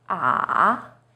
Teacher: it first steps down then Rises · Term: Third tone